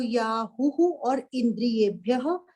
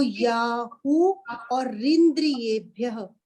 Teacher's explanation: विसर्गे हटी तो र हो गया जब हमने इकट्ठा किया